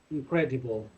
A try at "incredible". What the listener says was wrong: Muy fuerte ese incredible, incredible.